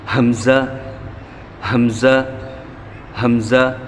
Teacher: حمزہ کو ہم بغیر کھینچ کر پڑھیں گے سینے سے آواز نکال کے ہا کی طرح